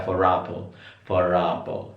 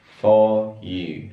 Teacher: Nah, jadi R, ingat di British itu nggak semuanya silence. Jadi R tetap ada sounding, atau itu akan tetap berbunyi kalau diikutin suara vowel, dan akan mati ketika diikutin suara consonant.